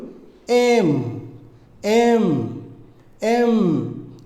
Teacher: দুই ঠোঁট মিশিয়ে নাক দিয়ে বাতাস বের করে ফেলুন